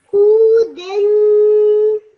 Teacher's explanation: Nice nasal sound at the end because of the tanween.